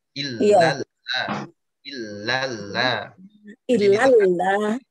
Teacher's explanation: Tapi yang la kedua dipanjangkan 4.